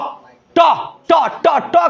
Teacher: ट आप उच्चारण करोगे ट तो आपका जिह्वा मुड़ेगा। जिस समय जिह्वा मुड़ा मतलब मूर्धा, जिह्वा मुड़ा मतलब मूर्धा, तो आपका सही ऑप्शन होगा सी, मूर्धा।